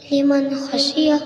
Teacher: نون کی آواز کو ظاہر کر کے بلا گننا کے جلد پڑھیں گے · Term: اظہار